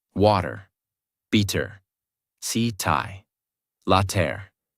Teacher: In these words, the mouth does not stop strongly on the T. The tongue touches quickly and moves on. That is why it sounds softer. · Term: soft American T